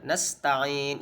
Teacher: Nasta'in cukup dibaca 2 harokat panjangnya